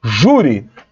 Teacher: a sílaba tônica de júri é ju, então o acento tem que estar no U.